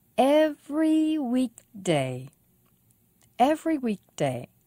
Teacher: every week day four syllables stress on week